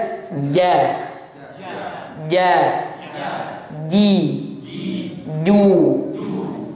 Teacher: Enggak boleh hamas, enggak boleh ada nafasnya. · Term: huruf ja